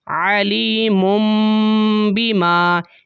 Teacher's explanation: جب آپ نے ساتھ ملا کے پڑھا تنوین کے بعد با آ گئی ہے تو آپ نے میم کی آواز نکالی، علیم بیما، اسے بولتے ہیں اقلاب کرنا۔